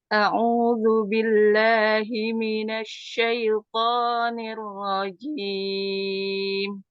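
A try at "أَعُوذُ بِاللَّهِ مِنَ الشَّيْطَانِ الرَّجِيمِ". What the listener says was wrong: Sya-nya diberikan power. Asyaitonir rajim.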